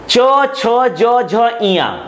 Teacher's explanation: यहां पर जो जीभ होता है वो ऊपर तालु से टकराता है, हमारे मुंह के ऊपर छत से टकराता है जिसे हम तालु कहते हैं, तो इसे कहा जाता है तालव्य।